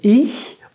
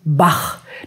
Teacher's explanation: sind zwei verschiedene ch Laute die nicht in allen Sprachen Vorkommen der ichlaut ist ein weicher laut der im vorderen Mundraum gebildet wird und der achlaut das ist ein harter laut der hinten im Rachenraum gebildet wird